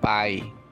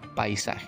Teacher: Porque está presente el diptongo AI, ¿no? El diptongo AI, vocal abierta con vocal cerrada.